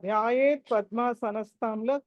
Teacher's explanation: థ last త ఏదైతే ఉందో అది మహాప్రాణం అది ఒత్తి పలకాలి